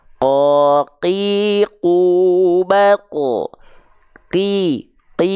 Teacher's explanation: qof kasr enggak boleh ada percikan-percikan nafas enggak boleh Enggak boleh hams enggak boleh karena sifat qaf itu adalah jahr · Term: jahar